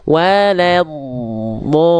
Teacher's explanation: Jadi istitolah tuh dia sedikit memanjang makhrajnya. Waladdo. Makanya kenapa dia mengalir suaranya itu agak tertahan, nggak langsung waladdo.